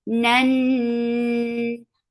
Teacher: This idgham is with gunna, so keep the sound in your nose for a longer time